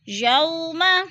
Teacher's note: وولین کو ہم لمبا بھی نہیں کریں گے اور جھٹکا بھی نہیں دیتے، آرام سے ادا کرتے ہیں